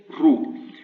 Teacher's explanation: So just believe me, you have this ru here is emphatic, which means a bit darker and a bit lower in the throat.